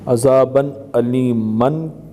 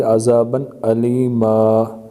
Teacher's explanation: وقف کی حالت میں کلمے کے آخری حرف پر دو زبر کی تنوین ہو تو اسے الف سے بدل دیں گے